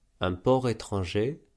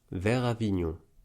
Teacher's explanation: on réalise un enchaînement avec le r, et non une liaison avec la consonne muette